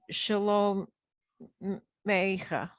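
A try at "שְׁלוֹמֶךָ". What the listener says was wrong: Shlomecha. dots are more of an S sound. The 3 dots is more of an eh rather than a.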